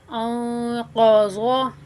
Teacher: قاف کی ادائیگی صاف طور پہ گلے سے جو ہے اس کی ادائیگی محسوس ہونی چاہیے، جیسے اندر تالو ہلتا ہے نا، پڑھتے ہوئے تالو ہلتا ہوا محسوس ہوتا ہے، وہ لازمی ہلنا چاہیے۔